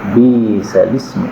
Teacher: Jadi hamzah itu boleh diringankan menjadi dihilangkan.